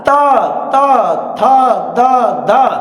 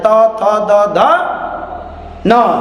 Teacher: त बोलेंगे तो ये जीभ का अग्र सिरा जाकर आगे वाले दांत को टच करता है। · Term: दंत ध्वनि